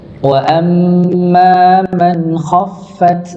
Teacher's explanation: huruf mim bertasydid maka ditahan ng didengungkan